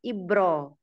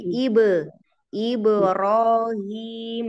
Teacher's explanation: huruf ba yang sukun pantulkan dulu